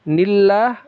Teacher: Ah, ini lafaz jalalah dibaca tipis tarqiq ya. · ini lafaz jalalah dibaca tipis tarqiq ya. Karena sebelumnya ada huruf nun yang berbaris kasroh.